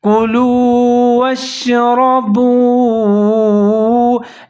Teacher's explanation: یہاں پر کلو لام پیش کے بعد واو ساکن ہے، لام کے ساتھ ملا کے پڑھیں گے